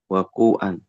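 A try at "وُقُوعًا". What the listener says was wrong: ini masdarnya pakai dhammah ya. Wuku' dari waqa'a yaqa'u. Masdarnya wuku'. Wuku'an.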